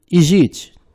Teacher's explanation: a segunda e a terceira letras, Z e Chá, elas são pronunciadas como se fosse uma única letra. Pronuncia-se apenas G.